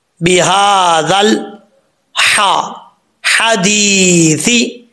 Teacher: دال کے بعد یا مدہ ہے، الف کی مقدار لمبا کریں گے